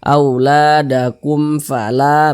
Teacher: Ini huruf mim sukun nih, setelahnya adalah huruf fa, atau mim sukun berjumpa dengan huruf fa, bukan huruf ba, bukan huruf mim, maka semua hukumnya namanya izhar syafawi. Baca jelas, tidak berdengung, baca pendek saja.